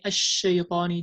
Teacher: Tafashi is spreading the sound of the sheen, starting from its articulation point.